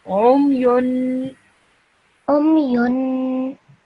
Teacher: this ayn sound should be said from within your throat, deep within your throat